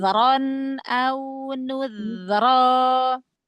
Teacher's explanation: Zalnya alirkan suaranya. Rokhwah.